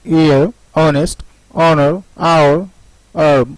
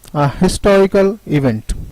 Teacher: The words still have a silent H which are of French origin, like ear, honest, honor, hour, herb, or you can say it herb.